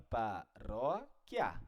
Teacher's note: A palavra paróquia, ela é dividida silabicamente assim, ó, paróquia, a princípio, né? Ela é uma paroxítona, por quê? Porque a sílaba forte é a penúltima.